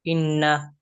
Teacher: এক আলিফ পরিমাণ ওয়াজিব গুনা করে পড়তে হবে